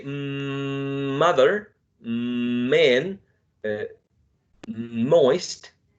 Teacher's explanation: Because when you say mother, man, moist, you put your lips together, right? So the two lips are working together. So bilabial.